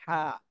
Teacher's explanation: চাপ দিয়ে আচ্ছা মাশাল্লাহ সুন্দর হয়েছে তাহলে এই হরফটা আমরা শিখলাম আমাদের যে কণ্ঠনালী গলা গলার মাঝখান থেকে এই হরফটা উচ্চারণ হবে চাপ দিয়ে একটু চেপে বাতাস বের করতে হবে